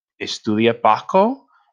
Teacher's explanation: And as you can hear, that rising intonation.